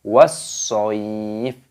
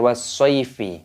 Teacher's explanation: Nah, di sini dimasukkan, diidghamkan, dibaca was-sho. Nah, ketika berhenti tanda waqaf maka fa-nya dimatikan, dibaca was-shayf, bukan was-shayfi, seperti itu.